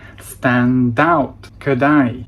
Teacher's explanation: In all of these cases, the last consonant of the first word, it was a d or a t sound, rolled into the next word that began with a vowel